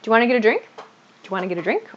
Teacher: So this do you want to becomes do you wanna, yeah? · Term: reduced pattern